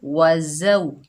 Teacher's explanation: जा के ऊपर ज़बर, आगे वाव साकिन है, ये वावलीन है, इसको नरमी और जल्दी से अदा करेंगे। और जा जो है सख्ती और सीटी वाला हरूफ है